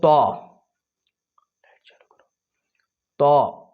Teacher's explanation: زبان کا سرا اوپر کے سامنے والے دونوں دانتوں کی جڑ سے مل کر طا ادا ہوتا ہے۔ طا زبان کا سرا اوپر کے سامنے والے بڑے دونوں دانتوں کی جڑ اندر، وہاں سے طا ادا ہوتا ہے۔